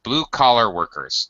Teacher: the normally High first syllable becomes low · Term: set phrase